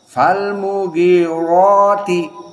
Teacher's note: Semua qira dibaca ra mufakhamah karena ra fathah, apalagi ada madnya.